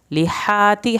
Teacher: ہا کو حلق سے پڑھیں گے، تا کی زیر کو لمبا نہیں کریں گے